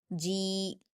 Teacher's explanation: जीम पर या मद्दा है, 2 हरकत खींचेंगे